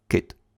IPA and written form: kɪt (кит)